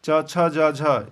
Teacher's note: च वर्ग च छ ज झ इसका उच्चारण स्थान तालू